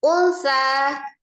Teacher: Wal ada alif lam qamariyah, alif lam qamariyah, wal alif lamnya ditandai dengan lam sukun, sukunkan langsung ke huruf lam, wal. Unsa, nun sukun ketemu dengan huruf sa ya, hukumnya adalah ikhfa ya, dibaca samar disertai dengan ghunnah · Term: ikhfa hakiki